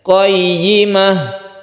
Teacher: Ini sama dengan yang tadi bayyina, ini tasydid ya, harus jelas y-nya. Setelah kita tasydid, ya-nya harus jelas kasrohnya.